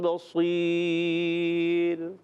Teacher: اس سے پہلے یا ساکنہ ہے، اس لیے را باریک رہے گی، پر نہیں ہوگی